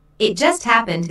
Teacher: Notice the stress on just, which emphasizes that the accident happened very, very recently.